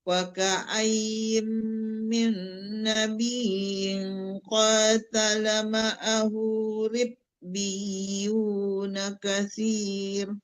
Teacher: ya ribbiyu tasdid ianya belum dapat. Jangan ribbiyu aja, ribbiyu ditekan ke ya.